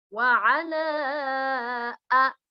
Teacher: bendera bertemu alif dinamakan mad jaiz munfasil, panjangnya boleh 2, boleh 4, ya, sampai 5 harakat